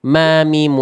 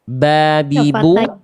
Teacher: Contoh misalnya mim gak punya kolkolah, ba punya kolkolah. Mim sedikit mengalir suara tawasud, ba itu syiddah tertahan suara.